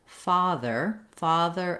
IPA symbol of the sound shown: ɑ